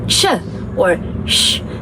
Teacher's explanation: So the sounds that are produced with the blade of your tongue is called the alveopalatal or the palatal or prealveolar sounds. These are the sounds that are produced when your blade of the tongue is approaching your hard palate just behind your tooth ridge